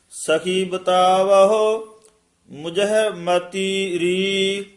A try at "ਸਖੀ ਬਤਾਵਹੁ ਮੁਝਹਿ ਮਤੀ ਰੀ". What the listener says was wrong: ਸਖੀ ਬਤਾਵਹੁ, ਇਥੇ ਵਿਸਰਾਮ, ਮੁਝੇ ਮੱਤੀ ਰੀ, ਮੱਤੀ ਕਸ ਕੇ ਬੋਲਣਾ ਹੈ।